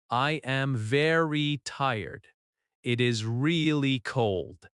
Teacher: The adverbs very and really are softer than the final adjective. Your voice goes down at the end. That falling tone shows confidence.